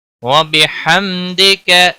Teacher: وسط و حلق والا حا ہے